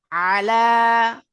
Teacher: আইন উচ্চারিত হয় গলার মাঝখান হইতে